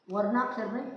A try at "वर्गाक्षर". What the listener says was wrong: नहीं वर्णाक्षर नहीं, वर्गाक्षर। वर्ग ग वर्गाक्षर। हो वर्गाक्षर का वर्ग है ना।